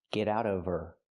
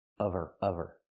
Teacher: we need the v sound in of because we don't pronounce the H in her. We link the sounds.